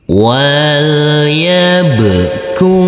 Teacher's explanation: Huruf kaf kita baca panjang dengan panjang 2 harokat. Dan huruf alifnya ini kita anggap tidak ada.